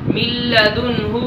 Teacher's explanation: ہم ادھر ادغام بلا غنہ کر کے پڑھیں گے یعنی بغیر غنے کے پڑھیں گے. من لدنہ غنے کے ساتھ نہیں پڑھیں گے.